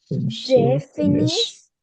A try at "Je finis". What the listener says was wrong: pronounce this. Je finis. We don't pronounce the last letter. Je finis.